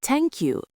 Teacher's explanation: Spanish speakers say t instead of th